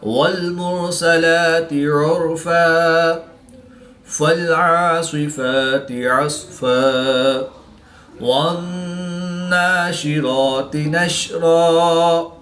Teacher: 2 زبر کی تنوین کو وقف کی حالت میں الف مدہ سے تبدیل کر کے پڑھیں گے